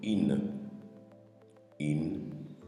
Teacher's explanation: Le Kasratani donne ici le son In. Au lieu de I, elle nous donne In.